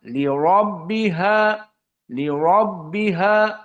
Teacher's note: maka dibaca ro dalam keadaan tafhim Kenapa karena dia fathah dan sebelumnya bukan ya kalau sebelumnya ya